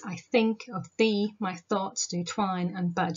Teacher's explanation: You've got the stress on the second syllable in each pair. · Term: blank verse